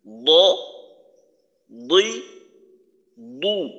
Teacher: যখন পেশের উচ্চারণ করব তখন আমাদের ঠোঁট গোল হবে।